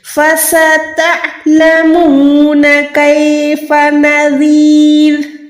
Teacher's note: फसता नहीं है, ता पढ़ेंगे तो वो अलिफ हो जाएगा। आइन की आवाज कैसे निकालेंगे, हलक की यानी गले की जो दरमियान में हड्डी होती है, आवाज को वहां से अदा करें। फसतअलमून कैफ़ नज़ीर, रा साकिन, रा जेर है वो रा साकिन में कन्वर्ट हो जाएगी, और ये जो है बारीक रा है, जेर के साथ जो रा होती है वो बारीक होती है।